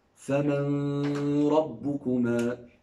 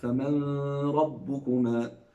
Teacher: does a gunna with the ra, and he makes it 2 counts